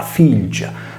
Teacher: tenendo la liquida (L) e degradando il suono da affricato alveolare /Z/ a quello palatale /G/